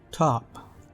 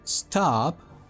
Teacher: we have the aspirated T with the puffs of air that you produce when you pronounce the word you can feel the difference if you put your palm in